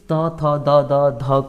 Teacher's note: त थ द द ध को हम दंत वर्ण बोलते हैं क्योंकि दांतों के सहारे आपके इसका उच्चारण होता है